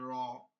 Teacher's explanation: জিহ্বার আগাটা ঘুরে যাবে একটু মাথাটা